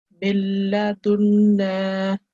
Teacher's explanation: And we have to sustain the nasal sound for 2 seconds. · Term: ghunna